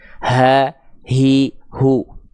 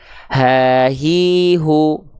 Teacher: H besar itu dilafalkan bukan dari dada tapi dia dilafalkan dari bagian pangkal tenggorokan